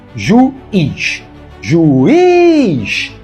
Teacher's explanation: a palavra tem duas sílabas e a mais forte é a última